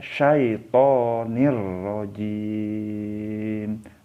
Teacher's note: karena ini tanwin ketemu dengan rok jadi jangan dibaca dengung